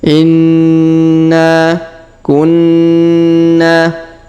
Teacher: Huruf Na berharokat tasdid maka kita tahan dan tekan, lalu kita panjangkan 2 harokat karena alif di depannya.